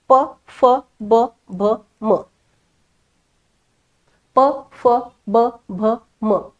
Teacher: ओठ एकत्र आणावेच लागतात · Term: ओष्य वर्ण